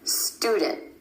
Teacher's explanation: My tongue stays up for the T sound after the N. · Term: held T